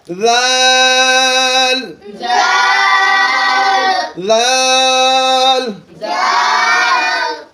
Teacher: দালটা হচ্ছে জিহ্বার আগা এবং সামনের উপরের 2 দাঁতের আগার সঙ্গে লাগায়।